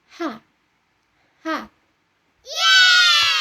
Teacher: dihasilkan dengan udara keluar melalui laring tanpa banyak bantuan dari lidah ataupun bibir gitu. Ciri khasnya itu ada di pita suara, bukan dari mulut bagian atas. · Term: konsonan laringal